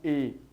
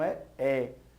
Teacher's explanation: Então são monossílabos tônicos com som aberto. Por isso, grafa-se o acento agudo e não o circunflexo.